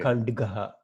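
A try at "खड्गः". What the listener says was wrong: Kadgaha, not Kand. Where is the nasal sound? There is no nasal at all. Kadgaha. It is Kadgaha. The nasal will have a dot. The nasal letter will have a dot to the right of it. There is no dot here. So it is Kadgaha.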